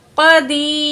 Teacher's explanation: دال زیر یا دی، یا ساکن ما قبل پچھلے الفاظ کے نیچے زیر ہے تو یہ یا مد ہے، 2 پوائنٹ کھینچ کے پڑھیں گے